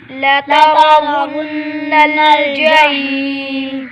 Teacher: نون مشدد گنہ کریں گے